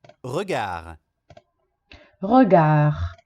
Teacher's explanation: Est-ce qu'on entend le D finale? No, on ne l'entend pas. Non si sente, quindi ho sbagliato.